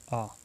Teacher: इसमें आवाज़ देखो कंठ से निकलती है तो एक कंठ स्वर है